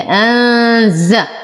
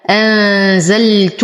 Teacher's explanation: لدينا نون ساكنه وبعدها حرف الزاي فالحكم اخفاء مع غنه كامله